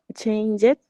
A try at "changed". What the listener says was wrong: The D doesn't sound. The changed.